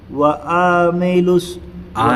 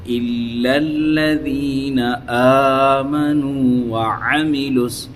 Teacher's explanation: یہ عین زبر آ ہے بس، اس کو کھینچنا نہیں ہے، رتی برابر بھی نہیں کھینچنا ہے